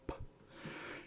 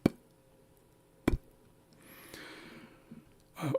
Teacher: So over a P, an apostrophe makes an ejective sound, makes it adjective, meaning you say it with more force.